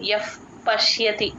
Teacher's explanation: పశ్యతి ఎఫ్ య య పక్కన విసర్గ ఎఫ్ సౌండ్ చెప్తాము ఆ ఆ ప ముందు ఎప్పుడు విసర్గ వచ్చినా సరే ఎఫ్ సౌండ్ ప్రనౌన్స్ చేస్తాం